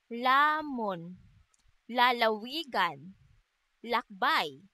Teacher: At ang letrang L naman ay may tunog na isinasaad sa paraan ng pagilid at sa punto ng panggilagid.